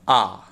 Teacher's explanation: निवृत्त माने जिह्वा बीच में आती है, अर्थात मुंह क्या रहता है? पूरी तरह से खुला रहता है।